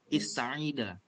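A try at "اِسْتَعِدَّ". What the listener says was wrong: Ista'idda. Ada tasydid.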